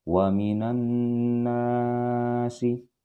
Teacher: Alif lam di sini alif lam syamsiah ya. Jadi alif lamnya dia melebur. Jadi nunnya masuk ke dalam nun yang bertasjid.